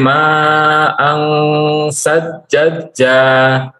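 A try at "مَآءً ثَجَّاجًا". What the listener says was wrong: Satu saja ininya, tasydidnya. Wa anzalna minal mu'sirati ma'an sajjaja. Yang kedua tidak diinikan. Tidak ditasydidkan. Sajjaja. Sajjaja itu jimnya 2 harokat ya, dua harokat. Sajjaja.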